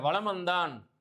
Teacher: வலம் வந்தான் என்பதில் மகர மெய்யெழுத்தை அடுத்து வருகின்ற வகர எழுத்து வருவதனால இந்த மகர மெய்யானது தனக்குரிய அரை மாத்திரை அளவிலிருந்து 1/4 மாத்திரையாக குறைந்து ஒலிக்கிறது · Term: மகர குறுக்கம்